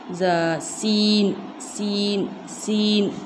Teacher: सीन का मखरज है ज़बान का किनारा और सनाए सुफला का ऊपरी हिस्सा